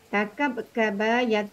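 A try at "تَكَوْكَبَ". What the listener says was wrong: Kenapa takabkaba? Baunya mana? Ibu tadi cakap takabkaba, baunya kemana? Hilang.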